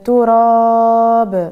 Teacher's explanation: باش تظهر صوت الباء وقت تكون ساكنه لان وقت السكون را يضيع الصوت اع الحرف الشديد المجهور باش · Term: القلقله